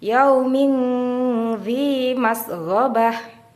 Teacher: dalam membaca ikhfa suara Nun tidak diucapkan dengan jelas melainkan terdengar seperti di antara izhar dan idgham atau samar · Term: ikhfa Hakiki, ikfa hakiki